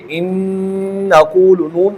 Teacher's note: اور ساتھ ساتھ غنہ کی آواز بھی آ رہی ہے، دیکھیں ان نقول، نون کی آواز ناک میں آ رہی ہے، اسے غنہ کہتے ہیں۔